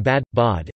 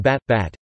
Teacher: Thus the vowel in bad /bæd/ is of normal length but the vowel in bat /bæt/ is shortened. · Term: pre-fortis clipping